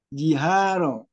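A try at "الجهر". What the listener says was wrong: Tadi yang tadi sudah terbaca itu udah benar itu. Hanya saja tadi saya katakan ini alif lamnya yang belum diperhatikan gitu.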